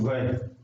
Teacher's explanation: दांत और होठ दोनों प्रभावित होते हैं इससे